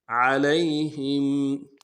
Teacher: عین کو واضح کریں گے، یا لین ہے نہیں کھینچیں گے، ہم میں میم ساکن غنہ کریں گے.